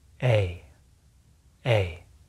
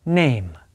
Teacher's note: To make this sound, our lips should not be relaxed, and our tongue should move from a middle high to high position in our mouth. A. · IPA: /eɪ/